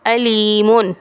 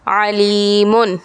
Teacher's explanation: حمزہ کی آواز ہے جھٹکے والی، جبکہ عین کی آواز ہوتی ہے بنا جھٹکے والی